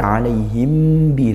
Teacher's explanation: Ikhfa syafawi dibaca dengung dan tidak perlu furjah.